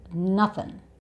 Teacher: so the 'ing' sound changes to the 'uhn' sound again, so the schwa sound. "Nothin'" And remember, it's relaxed, so it's not stressed.